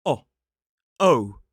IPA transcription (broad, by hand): ɒ